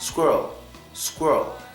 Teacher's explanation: do not have to make the second half of this word stronger it could just be flat